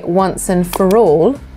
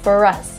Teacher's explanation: if I pronounce for on its own, I don't pronounce the R. But if I say once and for all, I do pronounce the R. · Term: linking R